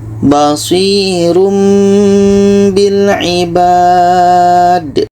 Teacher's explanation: Bunyi tanwin kita ubah kepada mim. Jangan dibaca basirun. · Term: iklab